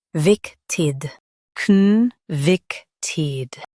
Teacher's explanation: Stress vic and soften tid.